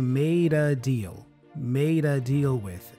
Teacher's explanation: we connect made with uh and then it sounds like maida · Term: connective speech